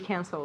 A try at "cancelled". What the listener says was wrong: Good pronunciation. That T is strong.